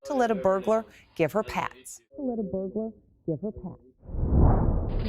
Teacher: So the reporter drops the H there from the word her. Instead of give her, is giver, all connected.